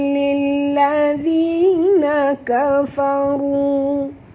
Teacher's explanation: Ru 2 harakat, ma'asli dan tebal